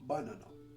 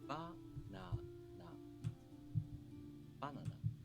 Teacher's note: The accent is on the first syllable. The pitch drops right after the accented syllable. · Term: pitch accent